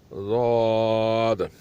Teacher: ज़ाद की मखरज ये है कि ज़बान की साइड ऊपर वाली दाढ़ों को लगे सीधी या उल्टी, दोनों में से एक, तो ज़ाद की अदायगी होती है।